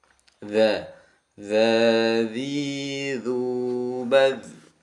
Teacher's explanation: ujung lidah menempel ujung gigi seri atas jadi antara ujung sama ujung gigi ya lidah sama gigi itu saling bertempelan seperti itu ditempelkan dulu kemudian di keluarkan makhrajnya D dad nah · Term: Dzal mati